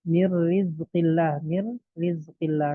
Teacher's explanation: Nun sukun bertemu ro dan ro-nya ada tasydidnya, yaitu berarti idgham kamil kalau dari sisi kesempurnaannya ditinjau dari kesempurnaannya.